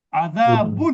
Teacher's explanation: গুণনা না হওয়ার কারণেই স্পষ্ট হচ্ছে, গুণনা হলে এটা অস্পষ্ট হয়ে যেত · এজাহারের নিয়মে নুনটা স্পষ্ট থাকে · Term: ইজহার